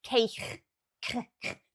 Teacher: you say it right at the back of your throat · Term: hard k sound